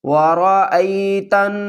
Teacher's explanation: حمزہ یا زبر ای، ورأی، تا کو نون سے ملائیں گے، نون مشدد ہے، نون پر غنہ کریں گے، الف اور لام کو نہیں پڑھیں گے۔